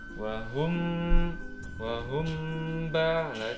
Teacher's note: Bacaan ikhfa syafawi adalah bacaan yang dibaca secara samar, suara bacaannya berada di bibir. Disebut bacaan ikhfa syafawi apabila ada huruf mem mati diikuti atau bertemu huruf ba. · Ketika mengucapkan lafaz mim maksudnya samar-samar itu mulut kita sudah membentuk huruf ba.